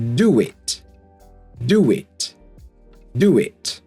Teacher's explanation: So we got do a round sound. The next word starts with a vowel sound. So we're going to add a w. And we kind of get do wit.